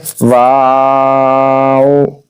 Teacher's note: جب او ادا کریں گے تو آپ کے ہونٹ گول ہو جائیں گے۔ اگر آپ کے ہونٹ گول ہو رہے ہیں واو ادا کرتے ہو، سمجھ لیں کہ آپ کا جو واو ہے وہ صحیح طریقے سے صحیح مخرج سے ادا ہو رہا ہے۔ · واو ادا کرنا ہے دونوں ہونٹوں کی گلائی سے ادا ہوتا ہے، یعنی جب وا کی آواز نکلے گی تب ہونٹ تھوڑے کھلے ہوں گے، اور جب او کی آواز نکلے گی تو ہمارے ہونٹ گول ہو جائیں گے۔